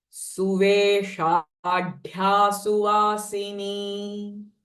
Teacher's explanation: This dh sound is also mahapran. Suve and this sh is retroflex.